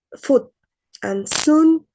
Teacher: In Scottish English, the U vowel is typically shorter but more tense like goose.